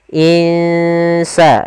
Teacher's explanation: Kita samarkan nunnya ke huruf sin. Insa dan itu ikhfanya ikhfa tipis.